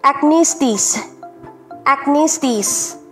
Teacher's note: yung stress po ay nasa second syllable ha